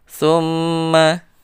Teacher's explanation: lidahnya agak digigit, dikeluarkan, dicepit dengan dua giginya itu atas dan bawah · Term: Tha